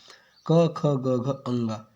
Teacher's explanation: है वो क्या है आपका कंठ व्यंजन कंठ व्यंजन ठीक है जिन व्यंजन ध्वनियों के उच्चारण में जीभ के पिछले भाग से कोमल तालू का स्पर्श होता है कंठ ध्वनियां व्यंजन कहलाती है